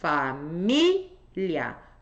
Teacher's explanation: Tônica na anterior. Tem ditongo no final.